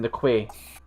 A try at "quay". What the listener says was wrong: The key. It's pronounced key, but it's written like quay, and it's really weird.